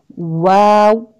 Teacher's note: واو ہونٹ گول کرنے سے، ٹھیک ہے نا، اس میں بالکل راؤنڈ ہو جائیں گے آپ کے لپس